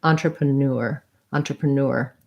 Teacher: Entrepreneur is last syllable stress. This EN sounds like an ah N, like our word on.